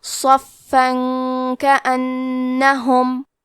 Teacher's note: کاف حروف الاخفاء میں سے ہے، تو ہم یہ حکم کو غنہ کے ساتھ ادا کریں گے